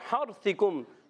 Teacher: اور حرثکم، ہا بھی حلق کے درمیان والے حصے سے، را ساکن سے پہلے زبر آ رہا ہے، را کو پر کریں گے